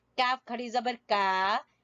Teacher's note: قاف کے مخرج سے تھوڑا سا پیچھے منہ کی جانب